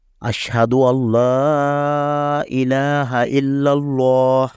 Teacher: یہ والا لفظ اللہ اس میں جو لام ہے یہ پر پڑا جائے گا کیونکہ لفظ اللہ سے پچھلے حرف پر زبر ہے